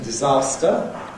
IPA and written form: dɪˈzɑːstə (disaster)